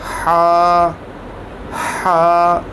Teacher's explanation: ये हलक से अदा होता है और हलक के जो दरमियाना वाला हिस्सा है उससे अदा होता है